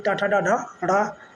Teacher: टा वर्ग में टाठा डाढ़ा ढ़ा, मूर्धा से बोला जाता है